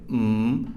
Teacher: to create closure in the mouth with the soft pallet lowered air escapes through the nasal cavity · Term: bilel nasal